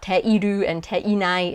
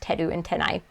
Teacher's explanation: in everyday casual conversational japanese they usually drop the e so it's teru and uh tenai it's not te iru and